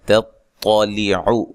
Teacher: یہ تا باریک ہے اور اس طا کو موٹا ادا کریں گے